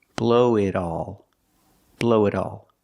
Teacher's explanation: The T in it changes to a fast D.